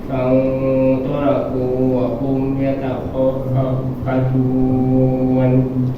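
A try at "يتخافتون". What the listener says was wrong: Kalau bisa jangan diputus ya. Yatakhafatun langsung, jangan yatakhafatun.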